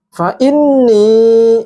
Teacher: Panjang dua harokat, gunnah nun bertasydid, ya.